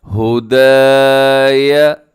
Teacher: دال کے ساتھ الف ہے تو دال کو آپ نے کھینچنا ہے